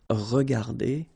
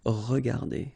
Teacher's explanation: Okay, so you don't pronounce anything after your e